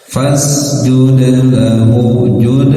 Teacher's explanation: Fasjud lahu, jud dal sukun, dal bagian dari huruf qalqalah yang harus dipantulkan ketika sukun